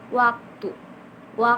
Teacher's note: untuk fonem W ini gabungan dari membulatkan bibir dan mengangkat belakang lidah